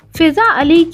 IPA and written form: fizːa alːi (Fiza Ali)